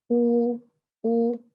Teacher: ये देखिए, जब आप होंठों को गोल करते हैं, ऊ ऊ, तो आपका प्रेशर, आपके जो होंठ हैं वो किनारों से तो मिलते हैं लेकिन बीच में नहीं, बीच में गैप है, फासला है। और होंठों की गोलाई जैसे है, छोटा सा गोल हम उसमें वो गड्ढा सा पैदा करते हैं, जिससे ऊ बहुत ज्यादा नहीं कि होंठ बाहर ही निकल आए।